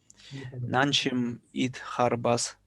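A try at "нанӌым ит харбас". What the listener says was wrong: Нан же. Не че, а же. Нан жим.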